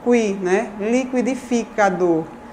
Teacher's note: uma sequência de oclusiva velar, mais um glide, seguido da vogal, que é o núcleo da sílaba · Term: ditongo crescente